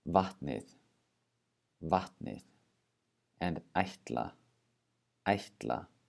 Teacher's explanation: listen for that pre aspiration that breathing out before the TN and the TL · All right, the next thing to know about T is there's also pre-aspiration when you have the combinations TN or TL.